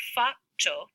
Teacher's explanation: take that alveolar stop and make it long